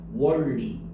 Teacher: 니은 받침이 리을 받침으로 바뀌었잖아요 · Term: 유음화